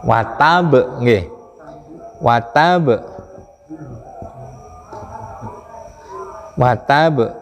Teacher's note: Mati di akhir tapi ada tasdid. Makanya pantulannya sangat karena jatuh setelah tasdid.